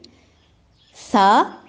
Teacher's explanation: ثا زبان کی نوک اور ثنایا علیہ کا اندرونی کنارہ سرا، یعنی ثنایا علیہ اور ثنایا سفلی دونوں کے سرے ہیں، لیکن ثا میں اور ذال میں اوپر والے دانت جو ہیں ثنایا علیہ کے سروں کے ساتھ یا اندر سے ٹکرائے گی زبان.